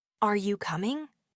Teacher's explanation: Your voice rises expecting a yes or no. · Your voice goes up at the end of the phrase or sentence. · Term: rising intonation